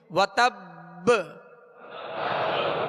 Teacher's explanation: اور اس کو جب یہاں وقف کریں گے مشدد حرف پر, تو اس کو مزید جو ہے قلقلہ واضح ادا ہوگا, یعنی وتب با کی آواز واضح ہوگی. وتب حرکت نہ پڑے بلکہ ساکن ہی ادا ہو, اور با کی آواز جو ہے لوٹ کر آئے, یعنی اس میں جنبش ہو.